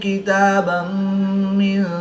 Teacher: دو زبر کی تنوین کے بعد میم حروف یلملون میں سے ہے تو یہاں پر ادغام مع الغنہ ہوگا، یعنی غنہ کر کے پڑھیں گے۔